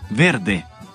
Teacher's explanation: el sonido de V, conocido como fricativa labiodental sonora, como en verde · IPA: /v/